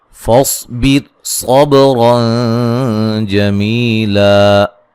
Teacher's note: صاد کو موٹا ادا کریں گے، بیر را کو باریک پڑھا جائے گا، صاد کو موٹا ادا کریں گے، با پہ قلقلہ کریں گے، اور یہاں نون تنوین کا اخفا ہوگا باریک، اور را موٹی ہوگی، جمی می یا مدہ ہے، وقفاً الف مدہ میں تبدیل کر دیں گے 2 زبر کو۔